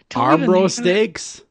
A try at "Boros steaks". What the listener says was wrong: Yeah, Boros. I think you said our bros. That's what you said.